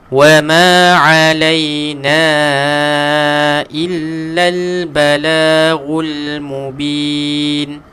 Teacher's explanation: huruf ain tekankan sikit, kemudian na panjangkan 4, 5 ataupun 6 harakat